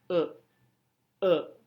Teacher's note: Sentral adalah bunyi vowel yang tercipta di mana lidah berada pada posisi netral di oral cavity. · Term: swa